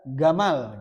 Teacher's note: banyak orang lahjah Arab itu seperti Yaman, Mesir itu ga. Jim itu jadi ga nanti.